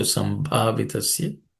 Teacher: Sambhavitasya, in that word, bha is aspirated.